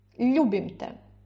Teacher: Ударение на у. На те ударения нет.